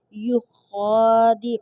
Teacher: خا حرف مستعلیہ میں سے ہے تو خا کو ہم نے پر اور موٹا کر کے پڑھیں گے